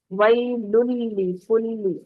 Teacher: ویل میں نون کی تنوین کی آواز جو ہے، نون تنوین کی آواز وہ آگے والے مشدد لام کے اندر داخل ہو گئی ، ٹھیک ہے، تو مکمل ادغام ہوا بغیر غننے کے یہاں